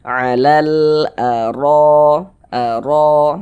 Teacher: Seperti ini ada harakat fathah ini baris satu di atas huruf harakat fathah. Maka huruf ro dibaca tebal, dibaca takkhim. Sehingga pangkal lisan kita, pangkal lidah kita naik terangkat ke atas ketika kita mengucapkannya. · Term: tabkhim